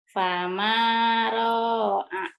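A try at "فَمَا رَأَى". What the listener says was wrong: Bukan, yang panjangnya mana? Ro-nya pendek. Ma-nya panjang. Fama ra'a.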